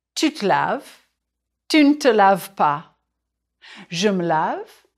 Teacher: In English, this unstressed vowel sounds like the central vowel of cinema. In French, it's called the e muet. And in French, the schwa is often dropped.